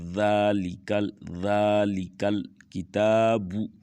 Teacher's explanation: یہاں پر ذا کے اوپر کھڑی زبر ہے تو یہاں پر ہم اس کو تھوڑا سا لمبا کر کے پڑھیں گے